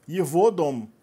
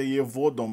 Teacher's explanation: o G dos pronomes de terceira pessoa masculinos e neutros é pronunciado nessa terminação aí, é pronunciado como V